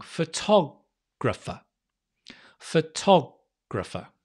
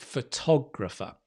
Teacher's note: So you've got three schwas. F, gra, fa. And one ta, quite long. Photographer.